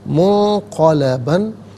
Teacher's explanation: خیرن منہا منقلباً، نون ساکن ہے، اس کے بعد قاف حرف اخفا ہے تو نون ساکن کو اخفا کے ساتھ پڑھیں گے، منقلباً، یہاں وقف کریں گے تو منقلبہ پڑھیں گے کہ دو زبر کی تنوین وقف میں الف سے چینج ہو جاتی ہے۔